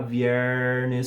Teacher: R retroflexo para mim, a língua fazendo uma flexão para trás. Isso está muito em inglês, viernes, né?